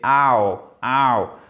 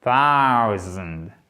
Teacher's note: Et là, ce n'est pas ou. C'est pas O, c'est AO. AO. C'est ce qu'on appelle une diphtongue.